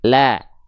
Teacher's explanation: huruf yang berharokat fathah yang keluar dengan vokal A, tolong tipiskan pelafalannya. Ya, tolong ditipiskan pelafalannya.